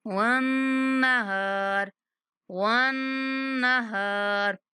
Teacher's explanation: نون پر غنہ کریں گے اور ہا کو 1 سیکنڈ تک کھینچیں گے